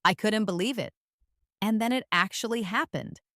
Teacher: with an excited rising tone